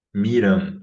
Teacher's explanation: Para fazer esse A que é nasalizado, a gente vai alçar a vogal por questões da fonologia do português mesmo, né? O português não aceita vogais baixas nasalizadas.